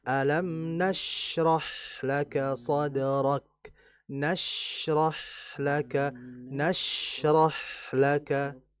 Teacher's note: syin dan ha dialirkan disertai dengan apa? Hembusan udara atau disebut dengan hames atau biasa kita istilahkan dengan desisan.